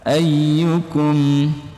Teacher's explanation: Ayyukum ada penekanan di bagian ayyu.